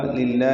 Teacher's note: لام اسم جرالہ یہ باریک پڑا جائے گا لام کی زیر کی وجہ سے